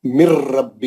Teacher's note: اس میں بالکل بھی غنہ نہیں ہوتا، بلکہ نون کا آواز ہی نہیں آتا، اور سیدھا لام اور را میں چلے جاتے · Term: ادغام بلا غنہ